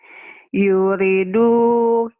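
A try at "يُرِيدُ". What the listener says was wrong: Bukan. Bukan. Panjang. Ri-nya panjang. pertamanya pendek. Kenapa dipanjangin? dipanjangin.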